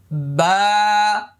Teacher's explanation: এক আলিফ পরিমাণ লম্বা হবে। মুখটা খালি ফাঁকা হবে।